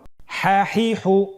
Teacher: আমরা জানি হার উচ্চারণ কোথা থেকে হয়? কণ্ঠনালীর মধ্যখান হতে।